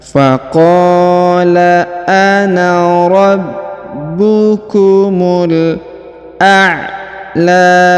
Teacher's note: Huruf mu langsung sambung ke alif lam qamariyah ya.